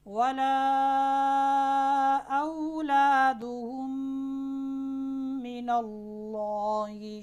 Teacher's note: پہلی میم کو دوسری میم میں ملا دیں گے اور غنہ بھی ہوگا. دیکھیں میں غنہ کر رہا ہوں.